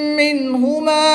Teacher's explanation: میم مشدد میں ہمیشہ غنہ ہوتا ہے تو یہاں پر غنہ کر کے پڑھیں گے. نون ساکن کے بعد ہا حروف حلقی میں سے ہے تو یہاں پر اظہار ہوگا، نون ساکن کو خوب ظاہر کر کے پڑھیں گے.